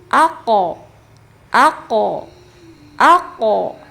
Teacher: syidah tidak berhenti sama sekali karena ada sifat selanjutnya yaitu qalqalah. Dipantulkan. · Karena huruf qof istila dibaca tebal, maka qalqalahnya juga ikut tebal · Dipantulkan. Nah, dipantulkannya pun tebal.